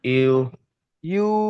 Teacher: ওয়াও মাদ্দাকে এক আলিফ পরিমাণ টান দিয়ে পড়তে হয়